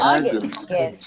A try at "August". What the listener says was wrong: August. This is not a. This is o. August. August. August. August.